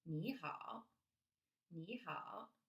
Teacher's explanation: when you put both of the words together the first word becomes the second tone instead of third tone